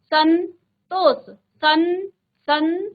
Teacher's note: म का न हो जाता जैसे सम धन तोष